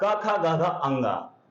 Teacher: ये व्यंजन है जिनका उच्चारण कंठ से होता है